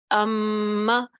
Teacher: اب آواز جو ہے ہماری ہونٹوں سے ادا ہو رہی ہے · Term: میم کا مخرج